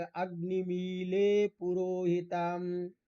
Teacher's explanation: वेद में ड के जगह ल का भी प्रयोग होता है, ड और ल में अभेद माना जाता है, लेकिन लौकिक संस्कृत में दोनों का प्रयोग अलग अलग ही होता है। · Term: डलयोर अभेद